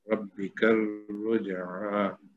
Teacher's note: را موٹا پڑا جائے گا کیونکہ زبر ہے اس کے اوپر، اور با پہ بھی زور دے کے پڑھیں گے کہ تشدید ہے.